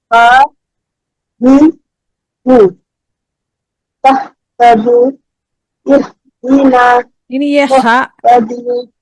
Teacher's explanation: आपका हा निकल रहा है, जो कि वसतुल हल्क से निकलता है